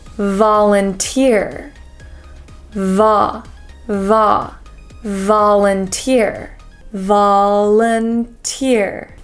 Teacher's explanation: even though it's spelt with an O, the sound is actually an ah sound